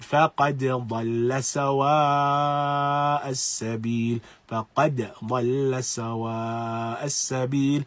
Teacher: it is recited with idhar. That is, it is recited clearly. And so we make a difference between qad and dhalla. · the qalqala is pronounced upon the dal